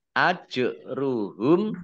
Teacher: jim sukun bacaan qalqalah dibaca memantul ditampakkan pantulannya